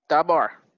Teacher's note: the stress or force of pronunciation falls on the last syllable. Bar.